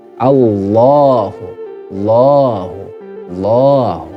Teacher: Kemudian hukum tajwid yang kedua pada surah Al-Ikhlas ayat yang kedua ini, yaitu masih pada kata lafaz Allahu. Ya, di situ ada fathah yang panjang, teman-teman. Dibaca mat tabi'i, panjangnya satu alif. Allahu, Allahu, seperti itu.